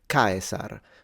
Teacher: So give it a little stress at the beginning. The diphthong is fully pronounced ae. And then the S should be frontal, like a S, not a Z. And then the R should be trilled. So Caesar, of course, the C is a K.